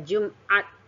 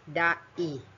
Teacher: bunyi yang dihasilkan yaitu adanya hambatan pada pita suara kita yang tertutup sempurna sehingga aliran udara terhambat sejenak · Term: glottal stop